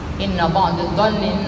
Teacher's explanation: Hukumnya menjadi gunnah musyaddadah, sehingga suara ditahan 2 sampai 3 harokat. Di sini sebutkan 2 ketukan atau 3 ketukan, tidak kurang dari itu.